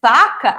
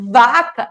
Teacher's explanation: o som do V ele é sonoro porque vibram as minhas cordas vocais